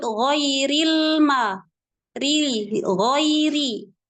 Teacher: rnya berharakat kasrah maka tipiskan bunyi rnya